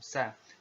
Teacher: Kalau dikasih fathah berarti SA, sa, seperti itu. Nah, secara teori huruf sa ini diucapkan dengan ujung lidah berada di antara dua gigi seri kita